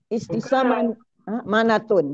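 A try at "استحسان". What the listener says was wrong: Bukan hurufnya perhatikan huruf nun bukan mim.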